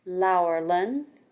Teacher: the first L is slender, the second L is broad